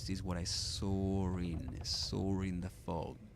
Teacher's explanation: in British English or standard southern British English, the most you would usually hear is this is what I soar in soar in the fog with an intrusive R